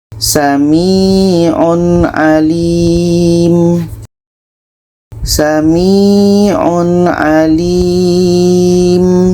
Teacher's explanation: Tanwin jelas, ain jelas dan tidak ada dengung. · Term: izhar halqi